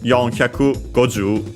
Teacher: And by the way, also there applies the same accent rule. The accent usually stays on the ju, just like for the number 10 on its own.